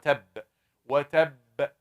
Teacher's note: This b shaking. If I don't shake it, if I say وَتَبْ, that's wrong. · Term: qalqala